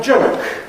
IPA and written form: ʤəʊk (joke)